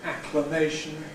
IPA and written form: ˌækləˈmeɪʃn̩ (acclamation)